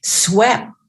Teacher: we don't explode a push of air in that final sound it's just a mouth form without that push of breath